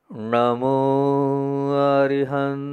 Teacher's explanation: जीभ को पीछे दो बार ले जाना है ण जो है ना पीछे जाता है